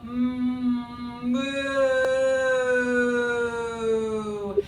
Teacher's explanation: So we're going to use the sound ooh, and I like the sound ooh because it brings the back of the tongue high and it brings the lips forward into some rounding